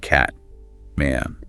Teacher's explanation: Some regional accents, like Midwestern, can sound a bit flatter than, say, British English. And vowels are often quite strong, maybe a bit nasal compared to RP sometimes.